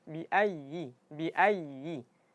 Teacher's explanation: Tapi jangan sampai ditekan sampai suara tertahan. Karena huruf ya dia sifatnya sifat rakhawah. Suara yang mengalir. Jadi ditekan bukan ditekan untuk menahan suara tapi ditekan ee kadar suaranya.